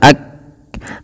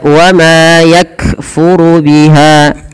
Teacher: Syiddah itu artinya tertahannya suara ak. Nah, berhenti kan kayak tertahan suara ak.